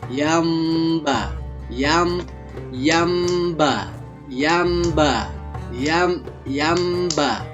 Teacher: Nah, maka apabila nun mati jumpa dengan ba, maka bibir atas bawah ditutup. Di saat ditutup akan diiringi dengan suara dengung. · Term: iqlab